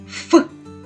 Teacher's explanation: Наші губи стиснуті і стоять на шляху повітря, що ми з вами видихаємо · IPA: [ф]